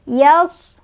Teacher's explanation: suadnya punya sifat sofir, ada desisan. Ya. Yals, ada siulan.